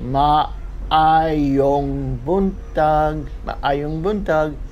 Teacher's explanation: it's spelled with 2 A's, and you have to pronounce each A separately.